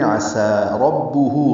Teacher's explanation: عسا میں عین وسط حلق سے ادا ہوگا ، سین صفیر کی آواز سے آواز ادا کرتے ہوئے دو